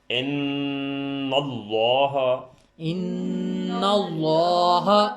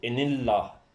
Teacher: زبر یا پیش ہو، دونوں صورتوں میں آپ نے اس کو ذرا ابھر کر بھر کے بولنا ہے، بھاری کر کے بولنا ہے، اور اگر پچھلے حرف پہ زیر ہو تو پھر نرم کر دینا ہے، لیکن یہاں چونکہ زبر ہے، ان اللہ، ان اللہ، اور اگر زیر ہوتا تو ان اللہ، پھر ہم نے اس کو بھاری نہیں کرنا تھا۔